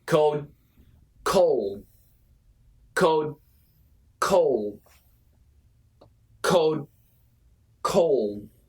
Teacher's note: So in daily English, we usually don't say D, we just stop.